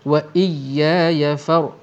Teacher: ra di sini ditebalkan kerana ra ini mati, sebelumnya berbaris atas